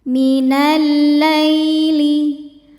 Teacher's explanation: lai ada harfulin sebab ada ya sukun sebelumnya baris fathah, dibacanya lembut atau lunak.